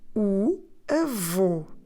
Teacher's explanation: conflexo or in English a circumflex on the letter o and that circumflex on the letter O it's there to tell us that we need to close the vowel